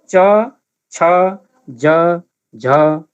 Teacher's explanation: उच्चारणका क्रममा दन्तमूलमा छुने र बढ्ता प्रयास गर्नुपर्ने भएकोले यसलाई स्पर्श सङ्घर्षी भनिएको हो। स्पर्श पनि र सङ्घर्ष पनि, बल पनि लगाउनु पर्ने र छोइने पनि भएकाले स्पर्श सङ्घर्षी भनिएको हो। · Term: स्पर्श सङ्घर्षी व्यञ्जन